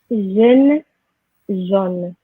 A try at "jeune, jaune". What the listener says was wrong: Très bien, très bien. This is always a problem.